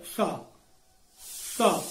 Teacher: दंत से बोला जाता है सा